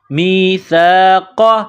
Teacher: سا الف زبر سا، می سا. قاف نقطوں والا قاف ہے، اس کو موٹا کرنا ہے، قاف زبر قا، میثاق.